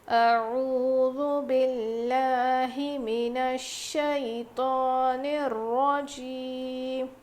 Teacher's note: باللہ میں لام کو باریک پڑھیں گے، موٹا نہیں